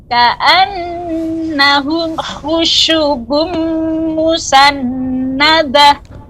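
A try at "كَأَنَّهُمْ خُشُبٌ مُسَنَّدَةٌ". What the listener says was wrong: Tidak lambat ya. Ibu, tidak terjadi pelambatan ketika membaca khusyubun, jadi harus dibaca ka'annahum khusyubum, demikian. Dah, panjangkan haknya Ibu, hak tak marbutoh yang berubah jadi hak musannadah. Panjangkan Ibu, dah.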